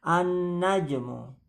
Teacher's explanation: Nun tasdid di tahan tiga harakat